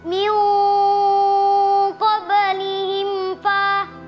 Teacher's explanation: Mim sukun bertemu huruf fa dibaca jelas.